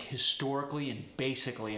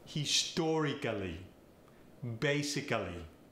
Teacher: you're going to emphasize every syllable like historically and basically